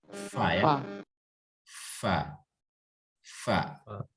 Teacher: Bibir bawah bagian dalam menempel pada ujung gigi seri atas. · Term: huruf fa